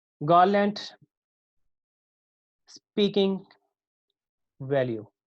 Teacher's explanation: इसमें first one stress वाला होगा और सेकंड वन में स्ट्रेस नहीं होगी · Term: ट्रोचेक पैटर्न